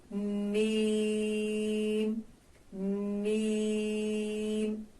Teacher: دونوں ہونٹوں کا خشکی والا حصہ جب آپس میں ملے گا، یعنی تھوڑا سا اس کو دبا کر ادا کریں گے